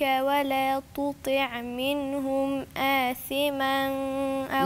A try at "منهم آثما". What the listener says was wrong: لا لا لا، في عندي هنا إظهار، إظهار على طول عشان في همزة وراها، همز هاء ثم عين حاء، وعندي غين خاء، الحروف الحلقية.